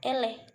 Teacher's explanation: dihasilkan dengan cara posisi lidah agak merendah sehingga agak menjauhi langit-langit keras caranya rahang bawah menjauh dari rahang atas di bawah posisi Netral